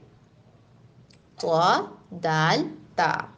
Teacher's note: رأس اللسان جب ثنایا علیہ کی جڑ کے ساتھ ٹکراتی ہے تو یہ تینوں حروف ادا ہوتے ہیں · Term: حروف نطعیہ